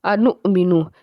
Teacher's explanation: حمزہ کے اوپر جزم کا سائن ہے اس لیے اس کو جھٹکے سے پڑھیں گے